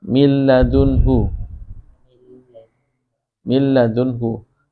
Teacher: Nunnya nggak dibaca, langsung idgham.